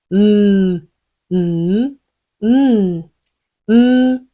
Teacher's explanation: 터트리시는 게 아니라, 콧소리로 공기를 유지해 주시는 거죠. · M과 N을 콧소리라고도 하는 이유가 여기 있어요. 입을 다물기 때문에 공기가 계속 코로 흘러나오는 거죠.